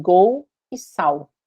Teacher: o caso de um L final de sílaba, como em gol e sal, e eu faço ele virar um som de U